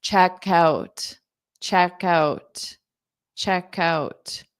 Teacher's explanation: So you hear that K sound on out.